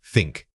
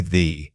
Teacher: Say think and feel that air escaping, no buzz. Now say the, and you should definitely feel your throat vibrating with sound.